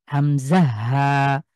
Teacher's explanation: এটা হলো কণ্ঠবর্ণ, কণ্ঠের একদম শুরু থেকে হামজা হা। আপনি এই দুটো হরফ উচ্চারণ করতে দেখবেন যে আর কোনো কিছু সাহায্য নিচ্ছে না।